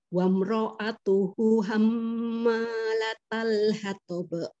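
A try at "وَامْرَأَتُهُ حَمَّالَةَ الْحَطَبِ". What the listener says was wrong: Itu wamro'atuhu, hu-nya itu 2 harokat ya. Itu domahnya terbalik harusnya itu ya. Jadi bacanya wamro'atuhu hammalatal hatab. Wamro ya, ngalir dulu mimnya wamro gitu, ngalir dulu.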